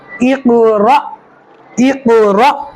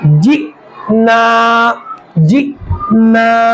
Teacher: حمزہ کے اوپر جزم آ رہا ہے، اس میں جھٹکا مار کر پڑھنا ہے